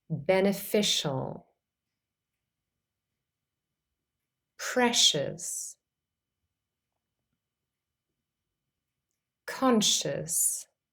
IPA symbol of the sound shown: ʃ